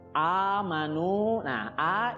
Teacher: ini namanya adalah mad badal panjangnya sama dua harokat